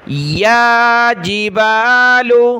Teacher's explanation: یا کے اوپر کھڑا زبر ہے، ایک الف کی مقدار اوپر کھینچا